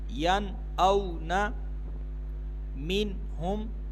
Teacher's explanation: نون ساکن کے بعد حمزہ آ رہا ہے, یہاں پر غنہ نہیں کریں گے, اظہار ہوگا